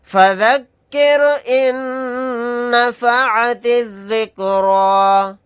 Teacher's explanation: نون کے اوپر تشدید ہے تو یہاں پر غنہ کر کے پڑھیں گے